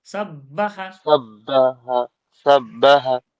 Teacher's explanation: ধাক্কা নয় ডবল হচ্ছে সাব বা জবর বা সাব্বা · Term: ডবল বা